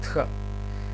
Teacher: Иако, повторно ќе речам, школски, значи, не правиме во читањето не правиме разлика, и епсилонот го читаме Е, и етата ја читаме Е. Тхета е една аспирирана беззвучна согласка дентал, Т, значи со еден здив Х, Тх, и ја читаме, значи, Тх.